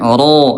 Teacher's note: Huruf ro ayah bunda dia jahr tidak keluar udara ya. Ro tidak ada udara.